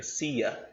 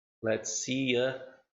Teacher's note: Com som de Y aqui no meio.